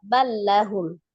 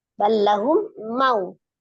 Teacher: Namanya idgham mutamasilain, sama nama ya. Maka lam yang pertama dianggap tidak ada, langsung ditasdid, dilebur ke huruf lam yang kedua, ballahum. Karena sama ya, jadi dianggap satu huruf aja yang berlaku, yang satunya dianggap tidak ada.